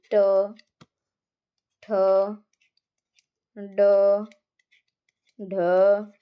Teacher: ट वर्ग का उच्चारण स्थान मूर्धा होता है